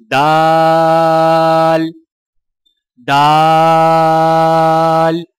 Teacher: زبان کی نوک کو سامنے والے اوپر کے 2 دانتوں کی جڑ سے لگا کر باریک آواز میں پڑھیں